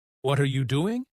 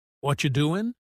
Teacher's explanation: They connect their words. Instead of what are you doing, they say what you doing.